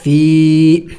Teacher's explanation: میم پیش ہم، وہم، ازواج مطہرۃ وہم، فا یا زیر فی، یا مدہ ہے، ایک الف کا مقدار کھینچیں گے